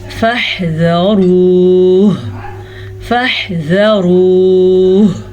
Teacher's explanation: وقف کرتے ہوئے ہا کو ساکن کریں گے